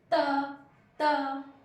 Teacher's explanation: तो हमारी जीभ दांत को टच हो रही है